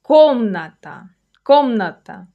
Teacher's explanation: Notice where the stress falls. Комната. Комната. That first syllable is the strong one.